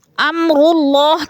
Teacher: اللہ سے پہلے لفظ را کے اوپر پیش ہے تو اللہ کو پر کر کے پڑھیں گے